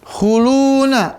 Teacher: Makhrajnya memajukan kedua bibir, ya. Lalu sifatnya dia ada tipis dan napas tertahan. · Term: Waw sukun